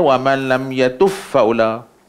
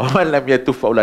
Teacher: Maka apa yang dipelopori, diriwayatkan oleh Imam Kisai ni, idghamkan ba masuk dalam fa. Jadi bunyi dia wa man lam yatuf faula.